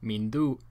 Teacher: For example, the glottal stop character in the auxiliary, mindu, is pronounced as the alveolar nasal na because that is the nasal at the same place of articulation as the following radical, da. The labial nasal ma can also be pronounced but tends not to be assimilated. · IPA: /mindu'/